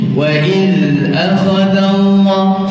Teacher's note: Ujung lidah dikeluarkan sedikit di antara dua gigi. Dua gigi depan ni lah, atas dan bawah, dikeluarkan sedikit. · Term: huruf zal